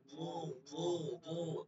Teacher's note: জিহ্বার গোড়াটা আপনি দাঁতের সাথে লাগাই একটু মোটা করে করেন, মোটা করে।